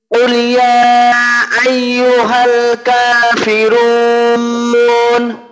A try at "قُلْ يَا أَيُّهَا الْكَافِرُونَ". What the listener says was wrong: লামের জজমটা কিন্তু, লামের জজমটা আরেকটু স্পষ্ট করা দরকার।